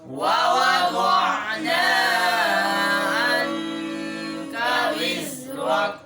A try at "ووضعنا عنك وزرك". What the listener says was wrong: ووضعنا مد नहीं है, मद असली है, थोड़ा लंबा करना, एक अलिफ ज़्यादा नहीं लंबा करना.